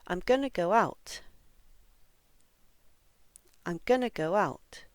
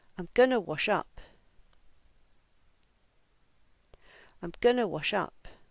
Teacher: in phrasal verbs like go out and wash up, we almost always put the stress on the particle. Phrasal verbs very rarely are stressed on the actual verb.